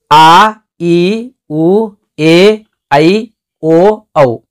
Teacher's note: ಎರಡು ಮಾತ್ರೆಗಳ ಕಾಲದಲ್ಲಿ ಉಚ್ಚಾರ ಮಾಡಲಾಗುವ ಸ್ವರಗಳನ್ನ ದೀರ್ಘ ಸ್ವರಗಳು ಅಂತ ಕರೀತೀವಿ ಅಂದ್ರ ಈ ಹೃಸ್ವ ಸ್ವರ ಉಚ್ಚಾರಣೆ ಮಾಡಬೇಕಾದರೆ ಏನು ಉಸಿರು ಹಿಡ್ಕೊಂಡಿರ್ತೀರೋ ಅದಕ್ಕಿಂತ ಹೆಚ್ಚಿಗೆ